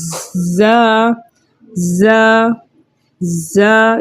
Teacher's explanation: زا ہے حروف صفیریہ میں سے ہیں، یعنی سیٹی والے حروفوں میں سے ہے، تو جب ہم اس کو ادا کریں گے تو ایک صفیر سی آواز ہمیں محسوس ہوگی